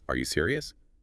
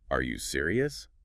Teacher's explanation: It barely sounds like a question. But add that little upward flick at the end.